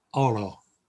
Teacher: The Spanish O is a very clipped O. It's not an long O like we might do in English.